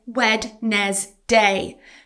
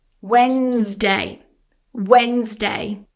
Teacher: So you're pronouncing letters that should be silent and adding an extra syllable. But actually this word is just two syllables and the d is silent. · But actually, this word is just 2 syllables and the D is silent.